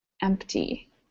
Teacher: people do say empty without actually pronouncing that P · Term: silent